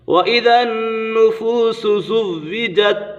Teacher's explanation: نون مشدد ہے، نون مشدد میں ہمیشہ غنہ ہوتا ہے